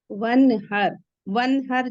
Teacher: यह जो नून है इस पर कलकला नहीं करना है जमा के पढ़ना है · یہ جو نون ہے اس پہ قلقلہ نہیں کرنا ہے، جما کے پڑھنا ہے۔ ون ہر، ون ہر جلدی سے نہیں کر دینا ہے کہ وہ ایک باؤنسی ساؤنڈ ہو جائے یا ترنت ہماری ٹنگ مخرج میں لگ کے ہٹ جائے، جما کے پڑھنا ہے۔